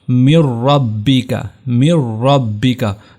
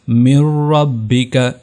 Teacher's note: غنہ ہم نے نہیں کرنا، یہاں پر صرف ادغام ہوگا